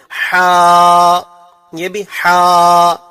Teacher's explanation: جیم ہا، ہم نے بتایا تھا کہ ہا جو ہے وہ ہمارے درمیانی حلق سے نکلتا ہے، تو اس کا مخرج درمیانی حلق ہے۔